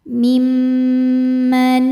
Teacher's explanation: Waman adlamu mim manif mimma. Ada hukum ghunah musyaddadah karena mim bertasydid. Cara bacanya dengung. Dengungannya tahan kurang lebih dua harakat.